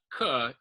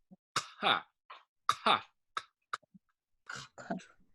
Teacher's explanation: the lowercase q in Klingon is similar to the K or the Q sound in English. But the difference is that it's pronounced way at the back of the throat. So it's not k, it's ka, ka.